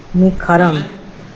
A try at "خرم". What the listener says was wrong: آپ کو نہیں معلوم خرم جو ہے وہ ایسے لکھا جاتا ہے، خرم ایسے لکھا جاتا ہے، واو پڑھا نہیں جاتا، یہ خرم ہے.